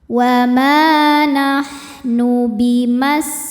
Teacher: Wama nahnu bimas. Nah, ini sin-nya desis ya karena punya sifat namanya shofir. Ada desis seperti suara ular. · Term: sofir